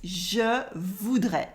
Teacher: without saying the s at the end